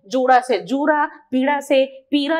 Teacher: अड़ का परिवर्तन आप भोजपुरी के प्रभाव से अड़ से र में बदलता है